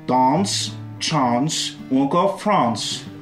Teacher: le A du mot France va être prononcé comme le mot chance avec un A long, puisqu'il est suivi du son ns